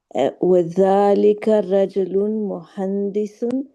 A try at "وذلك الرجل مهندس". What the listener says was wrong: It sounds like you say rajulun. That's a no-no, right? Because it's alif lam there, You don't want to say that. Rajulu, correct.